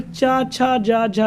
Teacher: फिर चा, छा, जा, झा, यानी चा वर्ग हमारा है और चा वर्ग का उच्चारण स्थान तालु होता है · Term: तालव्य व्यंजन